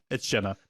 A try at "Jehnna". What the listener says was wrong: You gotta get the H.